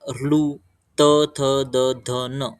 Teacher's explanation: यांचा उच्चार करताना जीभ जी ती दातांना टच होते म्हणून या वर्णांना दंत वर्ण म्हटलेले आहे